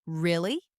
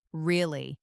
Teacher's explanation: Really? with a rising tone to show surprise, and then, Really? with a falling tone to show confirmation.